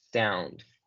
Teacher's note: tenemos un diptongo de una O y una U juntas que van a sonar como A, sound. Sonido o sonar en inglés se dice sound.